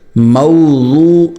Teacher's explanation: زبان کا سائیڈ والا حصہ اوپر کی داڑھوں کو لگائیں، دائیں طرف یا بائیں طرف یا دونوں طرف، اور نرمی سے نکالیں، موٹا نکالیں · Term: ضاد نکالنے کا طریقہ